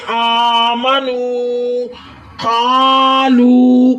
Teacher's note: کاف حروف مستعلیہ ہے، کاف کو موٹا کریں۔ حروف مستعلیہ کا مطلب کہ لفظوں کو موٹا کرنا ہوتا ہے۔